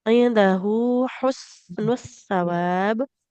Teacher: Ada ha yang di pangkal tenggorokan, kemudian depannya ha yang di tengah tenggorokan.